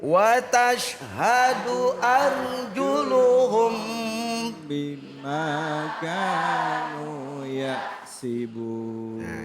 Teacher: Ikhfa artinya samar, tapi mulut harus rapat. Kenapa? Di depannya ada huruf ba. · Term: ikhfa syafawi